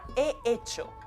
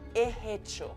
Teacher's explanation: Hace la H de hecho aspirada